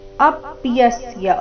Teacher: ಅಪ್ಯಸ್ಯ ಅ ಮತ್ತೆ ಯ ಮೇಲೆ ಆಘಾತ